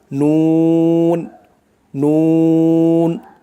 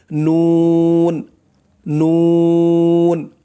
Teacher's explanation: জিহ্বার আগা তার বরাবর উপরের তালুর সঙ্গে লাগাইয়া উচ্চারণ হয় নুন নুন, মানে জিহ্বার আগা তার বরাবর উপরের তালুর সঙ্গে লাগাইয়া, উপরের তালুর সাথে লাগবে, উচ্চারণ হবে নুন।